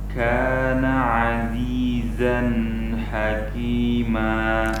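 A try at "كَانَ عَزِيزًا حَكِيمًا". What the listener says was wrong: Zan jangan terlalu panjang.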